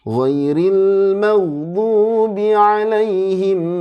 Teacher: Gin itu enggak boleh mantul tapi harus mengalir suaranya karena dia punya sifat namanya rukhawah kemudian tebal karena diawali fathah mag jangan mag jangan mag tapi